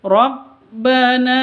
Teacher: Alif diawali dengan fathah Rabbana na panjang dua harakat